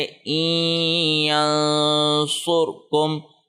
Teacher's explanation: حمزہ زیر نون اور یا ان تینوں کو مکس کر کے پڑھیں گے اور اس کو ناک میں پڑھیں گے، یہ اخفا کی سے ملتا جلتا ہے، اخفا سے ملتا جلتا ہے، ایگزیکٹ اخفا نہیں ہے مگر اخفا سے ملتا جلتا ہے۔ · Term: ادغام